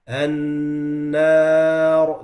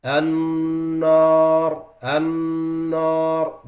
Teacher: The noon and the alif and the ra, all of them becomes heavy.